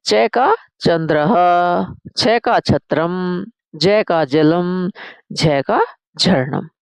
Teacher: फिर बेटा आया हमारा च वर्ग जिसका उच्चारण होता है तालु से।